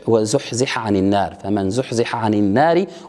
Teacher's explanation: يتم إدغام الحاء في العين في هذا الموضع